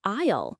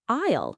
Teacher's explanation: For example, the word aisle. It's spelled A-I-S-L-E, but you don't say the S. It sounds like aisle, like I'll go to the store.